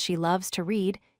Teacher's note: in the sentence she loves to read, you stress the word loves.